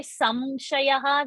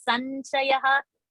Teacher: So samshayah is said by South Indians, sanshaya is said by North Indians.